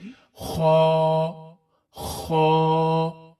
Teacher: ख्वा जो है वो हलक से ही अदा होता है। और हलक के शुरू के हिस्से से जो मुंह की जानिब है। गौर करें तो बिल्कुल शुरू के हिस्से से आवाज निकलेगी।